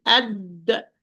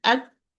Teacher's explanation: both when I pronounce them the articulation point is completely closed . I say add it's closed and I say at closed